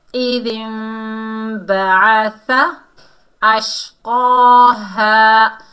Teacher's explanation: نون کی آواز کو میم میں بدل کر اخفاء شفوی کے ساتھ پڑھیں گے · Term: اقلاب